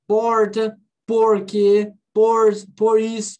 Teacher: Esse er é o R retroflexo, é o R do inglês